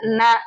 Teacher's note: மேல்வாய் பல்லின் அடிப்பகுதியை தொடும். மேல்வாய் பல்லின் அடிப்பகுதி நம்ம பல்லுடைய அடிப்பகுதில வந்து தொடுவதால் உச்சரிக்க எழுத்துதான் ந